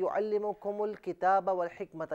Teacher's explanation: युअल्लिमुकुम को अल किताबा के साथ मिलाएंगे और वाव को अल हिकमता के साथ मिलाएंगे तो दोनों मकामात पर हमज़ा हज़फ हो जाएगा